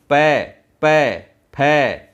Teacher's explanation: लेकिन प फ इनमें क्या हो रहा है? मुंह बंद हो रहा है।